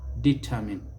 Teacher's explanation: stress is on the second syllable